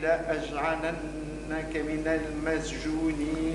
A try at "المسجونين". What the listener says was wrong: المس بالسين مش بالزاي. جيك سين فصيحة.